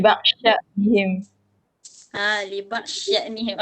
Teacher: Diidghamkan dad ke dalam shin.